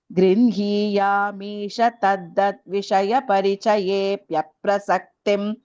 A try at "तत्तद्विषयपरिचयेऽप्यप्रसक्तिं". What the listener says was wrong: So, only thing is here, tat tad. I heard tad dad. Tat tat vishay. Tat tad.